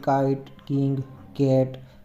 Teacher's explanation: તેના ઉચ્ચાર વખતે જીભનો પાછળનો જે ભાગ છે, જીભનો જે પાછળનો ભાગ છે એ કોમળ તાળવા એટલે કે સોફ્ટ પેલેટ અથવા તો વેલમને સ્પર્શે છે. જે સોફ્ટ પેલેટ કહીએ અથવા તો વેલમ કહીએ એને સ્પર્શે છે. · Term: વેલર કોન્સોનન્ટ્સ